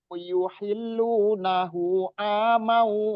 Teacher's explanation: gunnah itu ketika di waw, mau di wawnya yang ditahan 2 harokat minimal. Mau a-nya juga 2 harokat, itu matobi'i. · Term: Idgham bi gunnah